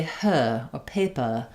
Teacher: they don't do the American R. They don't do the tight R there.